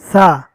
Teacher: زبان کے کنارے کو دانتوں کے کناروں سے باہر نکال کر پڑھیں گے تو سا ادا ہوگا۔